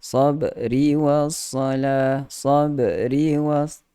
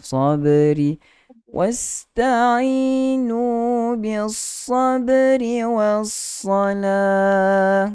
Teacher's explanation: Qalqalah lantunan yang lebih ringan. Seolah-olah dia macam ada baris. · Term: qalqalah sughra